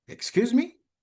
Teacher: Although excuse me is not a qu is not an interrogative sentence, the form is not the form of a question. But using the rising intonation means that excuse me means huh? Can you repeat it?